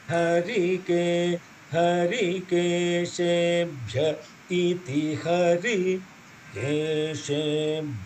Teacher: There is no dirgham on the hari. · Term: short vowel